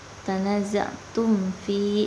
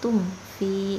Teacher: jadi bacanya jelas tum fi, itu enggak dimasukkan ke dalam fa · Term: izhar syafawi